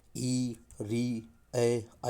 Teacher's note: अवृत्त मुखी जिनके उच्चारण में होठ फैल जाते हैं।